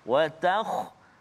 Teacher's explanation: kha salah satu huruf isti'la, tapi dalam keadaan sukun sekarang ni jadi sebelum dia baris atas maka ada tebal sikit